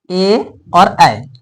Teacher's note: हल्का कंठ भी आएगा हल्का तालू भी आएगा तो ए और ऐ ये हो गया कंठ तालू से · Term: कंठ ताला वर्ण